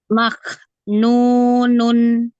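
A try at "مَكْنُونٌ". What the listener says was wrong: Maknunun. Ya, sedikit aja ya. Itu masih agak terlalu merenggangkannya terlalu banyak. Sedikit aja ya, renggangnya sedikit aja sambil dialirkan nafasnya.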